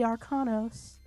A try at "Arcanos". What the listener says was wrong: Is it Arcanos or Arcnos? Because there's no other A in there. You're saying Arcanos. I think it's Arcnos.